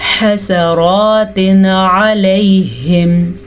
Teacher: تنوین کے بعد حروف ہلکی میں سے عین آیا ہوا ہے تو ہم تنوین کو ظاہر کر کے بغیر غنّے کے پڑھیں گے